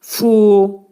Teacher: Çıxarılır. Fu, incə samitdir və yuxarı üst dişlə aşağı, demək, dodaq arasından çıxarılır